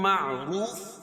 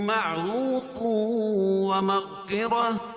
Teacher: لم معروف، روف واو مدہ، واو ساکن سے پہلے پیش ہو تو واو مدہ ہوتا ہے، اس کو ایک الف کے برابر کھینچ کے پڑھیں گے، اور را کے اوپر پیش ہے تو را کو پر پڑھیں گے